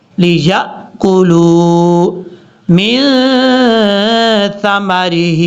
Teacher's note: ثا بغیر سیٹی کے ساتھ پڑھا جاتا ہے